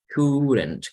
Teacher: Como si no existiera L, como si no existiera la O.